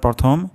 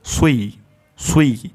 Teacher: প্রথম ঠোঁট গোল হবে তারপর ঠোঁটটি ছড়িয়ে যাবে